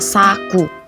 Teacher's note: Vokal U tinggi atas belakang bundar pada kata saku.